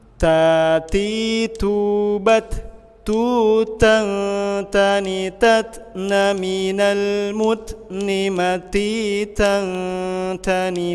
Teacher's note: Ta ini hamas ya. Keluar nafas.